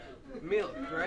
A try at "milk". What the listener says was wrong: And it's milk. It's the I and the L that are tripping you up, I think.